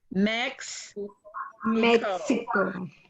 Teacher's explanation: it's in the back of your throat almost like a k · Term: the x sound